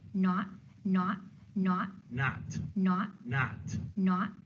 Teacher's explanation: it's going to be a little bit lip rounded in a Boston accent